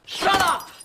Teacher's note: the second one had a glottal stop and the first one had some flapping. When the T becomes a D, very rare in British accents.